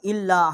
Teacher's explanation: حمزہ کو لام کے ساتھ مشدد کیا ہے، چھوٹی مد ہے، 3 الف جتنا ہم نے آواز بلند کیا ہے